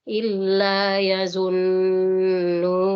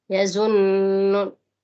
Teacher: Karena kita berada di akhir ayat, maka dipanjangkan sampai dengan 6 harakat di situ.